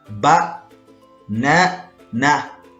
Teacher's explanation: The word banana has the unstressed vowel sound ah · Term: Schwa sound